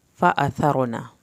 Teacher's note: سا کو زبان کی نوک سے پڑھیں گے، را کو پر کر کے پڑھیں گے، نون کی زبر کو ہرگز لمبا نہیں کرنا۔